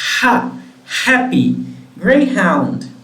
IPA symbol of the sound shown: h